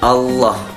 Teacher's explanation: lafadz Allah dibaca tafkhim dalam artian tebal